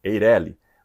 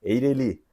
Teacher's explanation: Eireli Mas se nós olharmos para as regras de acentuação gráfica a pronúncia correta seria Eireli oxítona terminada em I